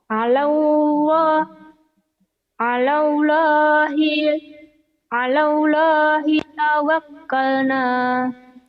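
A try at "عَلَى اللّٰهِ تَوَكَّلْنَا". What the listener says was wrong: Tuh gak ada neken. Jangan ditekan. Oh, masih ditekan-tekan begitu.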